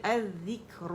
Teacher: ہوں کیونکہ الگ پڑھ رہی ہوں، اور یہ لام شمسیہ ہے، یہاں پہ مرجنگ ہو گئی اس کی شمسی حرف ذال کے اندر لام